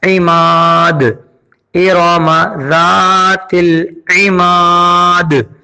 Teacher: گے، یہاں وقف اسکان ہو جائے گا، سکون والا وقف ہوگا، اور جب دال پہ جزم آ جائے گا، زیر ختم ہو جائے گا، تو اس دال پہ کلکلا ہوگا